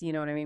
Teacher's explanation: with my voice falling, I'm assuming you already get my frustration.